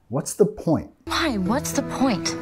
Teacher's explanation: Nota acá que estamos bajando de entonación al final.